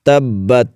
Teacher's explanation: با پر شد ہے تو اس کو خوب جماؤ کے ساتھ ادا کریں گے، کیونکہ جو بھی حرف مشدد ہوتا ہے اس کو خوب جماؤ کے ساتھ ادا کرتے ہیں۔